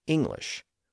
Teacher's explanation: When I pronounce the word, I don't pronounce the hard G in the middle